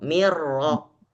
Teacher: Apakah terdengar Nun tidak sama sekali ghunahnya juga tidak ada si Nun hilang masuk total ke dalam ro